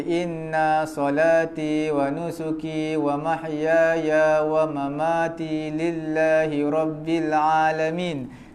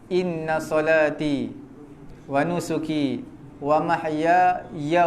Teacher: Jadi dia semua dia panjangkan. Sebenarnya inna tu pendek lah. Dengung je.